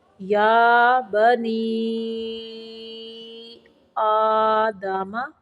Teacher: نون زیر یا نی کی آواز منہ سے نکالنی ہے، نا کی طرف لے کے نہیں جانا